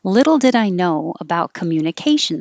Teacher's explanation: i'm going to go down at the end of the sentence